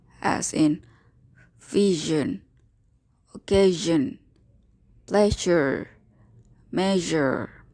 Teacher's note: it is fricative this is as in vision occasion pleasure measure placing your finger over your throat you can clearly feel the vibration of voice